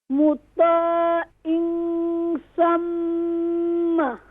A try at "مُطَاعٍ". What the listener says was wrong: No in pronounce ain sound. Don't pronounce hamza sound. مطاع is a wrong. Ain sound is pronouncing from middle of throat. مطا. طا is recite is more full mouth.